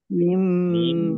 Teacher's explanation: Idgham bi gunnah masuk dengan mendengung yaitu mendengung mim. Ditandai mimnya ada tasdidnya. Biar mendengung maka harus ditahan. Karena kalau tidak ditahan tidak mendengung.